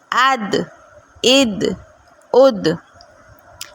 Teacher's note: اس کو میں ذرا سا جھٹکا دے کے پڑھ رہی ہوں کیونکہ اس میں صفت قلقلہ پائی جاتی ہے